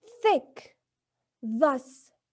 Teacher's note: Now for the second case, th in thick and the in thus, the air is forced through upper teeth and tongue, interdental